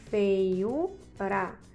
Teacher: U é a sílaba mais tônica, é a mais forte, logo essa palavra é uma paroxítona. E antes dessa palavra, desse U aí, dessa sílaba, tem a sílaba fei, com o ditongo decrescente, tá certo?